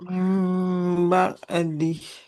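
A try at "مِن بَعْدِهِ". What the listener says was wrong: Mim ba'dih. Huruf ainnya jangan jadi ka ya. mim ba'dih. Mim ba'dih.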